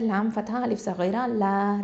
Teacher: லாம் ஃபதா அலிஃப் சகீரா லா 2 ஹரக்கத்தை நீட்டணும்